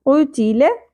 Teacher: قوف کو پر بھی کرنا ہے اور نرم تالو سے ادا کرنا ہے